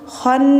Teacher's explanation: Tahan dulu karena nunnya ditasdid gunah dengung dulu khon baru panjang na.